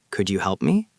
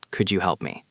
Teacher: The rising intonation sounds friendly and open. It sounds inviting. · If your voice is flat, you might sound bored or demanding. Yes, your voice should go up at the end of the request.